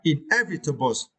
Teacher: you need to stress the second syllable